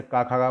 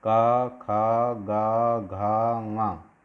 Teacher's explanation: देखो जैसे का, खा, गा बोल के देखो तो कंठ से आवाज़ आती है। का, खा, गा, घा, ङा, सब कंठ से बोले जा रहे हैं।